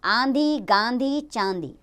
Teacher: इसका उच्चारण नाक और गले दोनों से होता है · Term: अनुनासिक